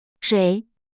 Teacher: Third tone falling rising, starts low, dips down, then rises up.